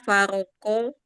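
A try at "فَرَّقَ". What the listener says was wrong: Farroko. Ada tasdid. itu ada tasdid Bu. Farroko.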